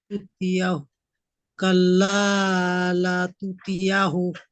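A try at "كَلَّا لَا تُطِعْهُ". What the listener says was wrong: তুতিয়া নয়, তুতি'হু, তাজের তাপেশ তু, ত আইনজের তি হয়, তুতি হয়। হা, হাপেশ হু,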